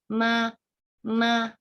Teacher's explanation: hurufnya ini keluar dengan cara merapatkan dua bibir